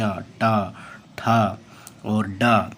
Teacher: मूर्धन्य कैसा होता है, जिसमें जो है जीभ गोल करके बोला जाता है